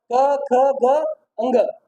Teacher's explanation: क वर्ग का उच्चारण है कंठ, क से कंठ, ठीक है। कंठ कहाँ पर है?